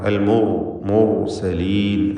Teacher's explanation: റാഇന് തഫ്ഖീം കൊടുക്കണം. അൽ മുർസലീൻ എന്ന് തടിപ്പിക്കുക